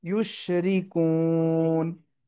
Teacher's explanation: থামলে কি হবে? সাকিন হচ্ছে। আর কু তিন আলিফ টানতে হবে। ইউশরিকুন। সুবহানাল্লাহি আম্মা ইউশরিকুন।